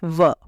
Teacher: दंतोष्ठः वर्णः ऐसे वर्ण जिनका उच्चारण दांत और ओष्ठ दोनों से होता है